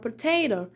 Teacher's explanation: Some like examples that I can mention is with the sound p in the word potato. We are using p, a bilabial sound, and this is a voiceless sound because we are not feeling any vibration here